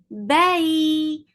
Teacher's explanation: ba is sharp, no flow of sound, and then it is attached with ya.